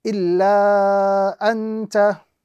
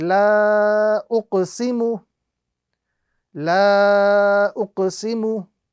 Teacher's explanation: So the correct pronunciation of this particular example is illa anta, with a prolonged stretch or the duration of 2 to 3 seconds being applied to the letter lam